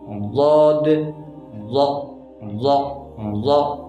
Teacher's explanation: ضاد کو ہم موٹا کر کے پڑھیں گے، منہ بھر کے پڑھیں گے، ٹھیک ہے، جیسے ضاد ضا ضا، ٹھیک ہے۔ زبان کے حافہ لسان اوپر کی بائیں داڑوں کی جڑوں کے ساتھ لگے گی، ٹھیک ہے، 5 داڑوں کی جڑوں کے ساتھ، ٹھیک ہے۔